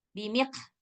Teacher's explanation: qafnya ada angin, maka dia jadinya huruf kaf